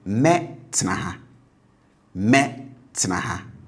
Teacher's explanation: still the tone will be high on the future tense marker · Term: high tone